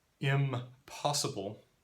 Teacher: the N has become an M in contact with the P because both sounds are made with the lips. Impossible instead of impossible.